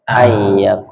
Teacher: nunnya hilang masuk ke ya